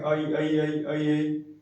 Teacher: जो ए बना है मुख्यतः इसमें दो अक्षर का उच्चारण पाया जाता है, दो स्वरों का, अ और ई। जब हम इनको जल्दी जल्दी बोलने का प्रयास करेंगे आई आई आई आई आई, तो ए का उच्चारण निकलने लगता है, ठीक है।